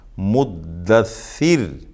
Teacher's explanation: وصل میں را کو موٹا پڑھیں گے، اس لیے کہ را پر پیش ہے، اور وقف میں را کو باریک پڑھیں گے، را ساکن اس سے پہلے زیر ہے